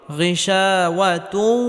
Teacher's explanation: তানবিনকে ওয়াওয়ার সাথে গুন্নাহের সাথে মিলিয়ে পড়তে হবে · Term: ইদগামে বাগুন্নাহ